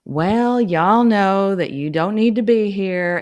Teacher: It's very lilting. Just yeah, kind of rises and falls, and vowels are drawn out maybe a little longer than others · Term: southern accent, Southern accent